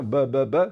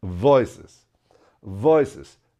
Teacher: V que se produce tocando pues el labio inferior con los dientes superiores